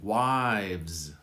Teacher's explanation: The V quickly moves to the Z. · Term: VZ sound